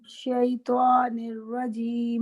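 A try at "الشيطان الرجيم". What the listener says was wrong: ابھی بھی آ رہی ہے واو والی ساؤنڈ. شیطان الرجیم.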